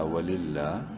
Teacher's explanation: واو زبر وا، لام لام زیر لل، ولل لام کھڑی زبر لا، وللہ لفظ اللہ سے پہلے زیر کی وجہ سے اس لام کو بولڈ نہیں کریں گے، ایک الف کے برابر لمبا ضرور کریں گے کھڑی زبر کی وجہ سے